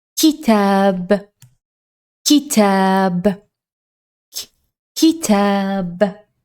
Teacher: kaf is pronounced from almost the same place as the qaf, but kaf is a little bit softer.